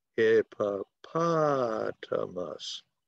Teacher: So the accent goes on the third syllable